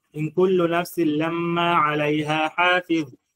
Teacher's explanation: hii dha mwisho mara nyingi pia tunajisahau, tunaigonga. Haigongwi.